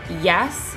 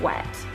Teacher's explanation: Glides are the final two consonant phonemes and are sometimes called semivowels because they are produced with very little constriction of the air passage, more like a vowel. These two phonemes are the Y sound at the beginning of yes and the W that occurs at the start of wet.